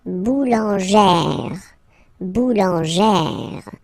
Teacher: you pronounce it like E, really open E sound.